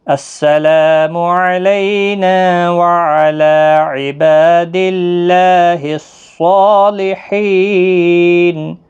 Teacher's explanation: اور جب وقف کریں گے تو نون ساکن پڑھیں گے